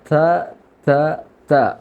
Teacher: കുറച്ചും കൂടി വളരെ സോഫ്റ്റായിട്ട് കുറച്ച് കാറ്റ് പുറപ്പെട്ടിട്ട് ഉച്ചരിക്കണം. ത ത ത എന്ന് മലയാളത്തിലുള്ള ത ഒരിക്കലും ഉച്ചരിക്കരുത്. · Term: അറബിയിലുള്ള ത